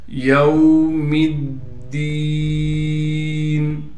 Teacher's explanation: میم کو دال سے ملا دیں گے، دال پر تشدید ہونے کی وجہ سے تھوڑا ٹھہراؤ رکھیں گے اور دال کے بعد یا مدہ ہونے کی وجہ سے دال کو ایک الف کی مقدار کھینچیں گے۔